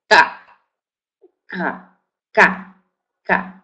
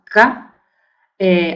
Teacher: el sonido oclusivo velar sordo de cama